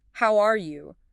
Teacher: that rising pitch makes it sound warm, welcoming and genuinely curious about the other person's well-being · saying it with a friendly rising intonation particularly maybe on R or you